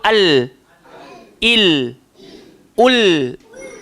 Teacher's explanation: Hujung lidah, langgar lelangit, atas bahagian paling depan. Bukan langgar gigi, langgar dekat lelangit. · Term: lam